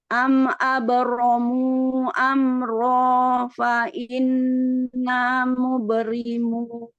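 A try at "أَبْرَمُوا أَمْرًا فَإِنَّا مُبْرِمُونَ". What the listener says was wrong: Ya, ri-nya jangan muberimun. Ri. Abramu fa inna mubrimun. Ditipiskan. Muberimun lebih ringan.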